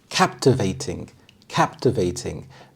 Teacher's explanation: The stress is on the first syllable, captivating.